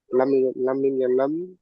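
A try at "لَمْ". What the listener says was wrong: তাড়াতাড়ি বলছেন কেন? লাম তিন আলিফ টান দিয়ে পড়তে হয়, একালিফ নম্বর তাকতি পড়েছিলে। লাম মিম জবর লাম। লাম তাড়াতাড়ি বললে হবে না, বলেছি।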